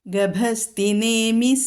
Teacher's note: പറയും വണ്ടി ചക്രത്തിന്റെ ഇല അപ്പൊ രണ്ട് അർത്ഥം ഉള്ളതുകൊണ്ട് രണ്ടു വാക്കുകൾ ആയതുകൊണ്ട് നമുക്ക് ഈ നാ എന്നുള്ള അക്ഷരം ദന്ത്യമായിട്ട് ഉച്ചരിക്കാം